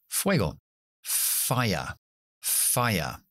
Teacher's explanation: es lo que llamamos labio dental cogemos los dientes de arriba la ponemos en el labio abajo y soplamos sin voz